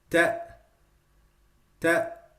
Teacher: the hamza, if I stop on it without continuing, it will sound like ta, ta. So you see the sound is stopped.